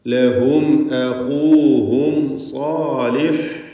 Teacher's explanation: രണ്ട് സാക്കിനത്തായ മീം ആവർത്തിക്കുന്നു, രണ്ടും ഇൽഹാർ ഷഫവിയാണ്, മണിക്കാതെ വെളിവാക്കണം